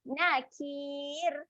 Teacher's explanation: huruf ra di hujung ni kita matikan dengan ra yang nipis sebab ada huruf ya sebelumnya.